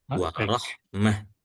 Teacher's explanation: ketika kita berhenti di huruf ta marbutah atau ta yang bulat iya itu dibacanya seperti huruf ha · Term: tak marbutoh